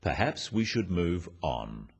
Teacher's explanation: This falling intonation makes it a more definite statement rather than a suggestion.